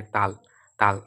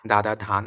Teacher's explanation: যেসব ধ্বনি উচ্চারণের সময় জিহ্বার ডগা উপরের পাটি দাঁতের সাথে কি লেগে যায়, উপরের পাটি দাঁতের সাথে লেগে বায়ুর বাধাপ্রাপ্ত হয়। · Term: দন্ত ব্যঞ্জনধ্বনি